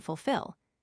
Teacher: An American, for example, almost always sounds the first /l/ in fulfill.